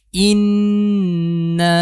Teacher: প্রথমে আমরা গুন্নাটা করব। গুন্নাটা শেষ হওয়ার পরে আমরা তিন আলিফ টান দিব। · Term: ওয়াজিব গুন্না